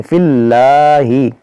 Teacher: इस फा को इस लाम से मिलाएंगे